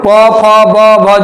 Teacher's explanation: प फ ब जो भी आएगा सिर्फ ओठ में।